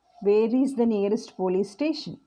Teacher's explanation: as the sentence progresses it will fall down